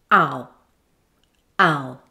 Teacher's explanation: Ow is a diphthong, which is a glide from one vowel to another, but within a single syllable. However, with diphthongs ending in U, the full sound is not usually reached, so the sound is not said as a completed U sound. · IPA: /aʊ/